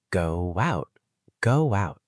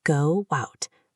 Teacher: There was a little w sound in the middle. When your lips are round for go, oo, and you move to out, ah, you pass through the w shape.